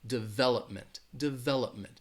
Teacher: the stress is going to be on that second syllable